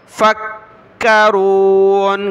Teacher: کاف کو سخت کیا تشدید کی وجہ سے